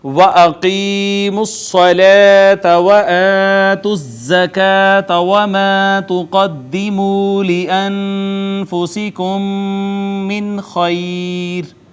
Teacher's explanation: میم ساکن کے بعد دوسری میم، پہلی میم کا دوسری میں ادغام شفوی